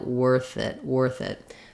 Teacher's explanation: So when I'm saying worth it, it's worth it, I'm linking those together, and you might find it more smooth and easier to say worth it if you think about it like the word were plus adding a THIT. So even though it's two separate words, worth it, I do link them together